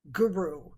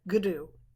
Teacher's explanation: But it's actually, well, it isn't a rolled European R, but it actually sits back on the tongue, guru, so that you're taking the tip of the tongue and tapping it on the back of the teeth there on the palate, guru, so that you actually get and we do a lot of wahigudu, wahigudu, wahigudu, wahigudu.